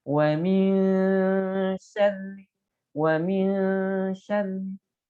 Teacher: Ikhfa hurufnya 15 selain huruf izhar, iqlab dan idgham bi gunnah dan bila gunnah, maka dibacanya harus samar disertai gunnah.